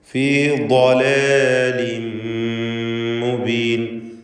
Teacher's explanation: മഖ്റജാകട്ടെ നാവിൻ്റെ അരുനീളത്തിൽ മേലെ അണപ്പല്ലിനോട് ചേർത്തുകൊണ്ടാണ്. നാവിൻ്റെ ഒരു സൈഡ് മേലെ അണപ്പല്ലിൽ ചേർത്ത് വെച്ചാണ് ദ്വാദ് ഉച്ചരിക്കുക.